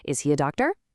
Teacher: But the real secret, the thing that makes it sound totally natural, you have to actively raise your vocal intonation at the very end of the sentence